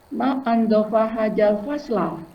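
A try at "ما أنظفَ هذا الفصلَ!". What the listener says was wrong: Bagus, betul.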